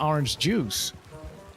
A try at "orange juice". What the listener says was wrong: You were putting the emphasis on the wrong syllable. Orange juice.